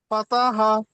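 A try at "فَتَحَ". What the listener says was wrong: পাতা টান দেব না।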